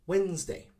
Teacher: we do not pronounce every syllable again we make it shorter by saying wednesday similar to like a z sound zed sound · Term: two syllables